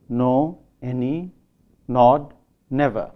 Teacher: the words no, any, nod, and never have a nasalized pronunciation also in Indian English